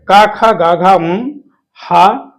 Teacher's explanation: इनका उच्चारण स्थान कंठ है